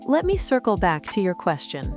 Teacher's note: use a slight pause after back for clarity.